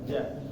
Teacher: Ja itu posisinya ada di bagian tengah lidah.